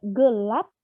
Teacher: Lalu, jika bilabial plosif berada pada posisi koda, maka plosifnya hilang menjadi tak lepas. Pada struktur kata tertutup, fonem P dibunyikan secara tak lepas.